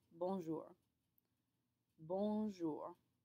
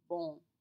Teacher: it's a nasal sound which means the air is going to come from your nose rather than your mouth in order to achieve this you have to curl up your